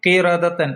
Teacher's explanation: അവിടെ കാഫും റായും തഫ്ഹീം ചെയ്യണം